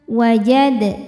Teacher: Huruf dal hukumnya qalqalah sugro karena dalnya sudah sukun dari asalnya dan berada di tengah bacaan. Cara bacanya dipantulkan dengan pantulan yang kecil. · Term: qalqalah sughra